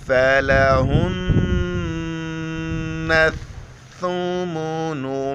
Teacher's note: الثُّمُنُ، نون پر غنہ کریں گے شد کی وجہ سے، پھر نون کو ثا کے ساتھ ملائیں گے اور ثا کے وقت زبان باہر نکالیں گے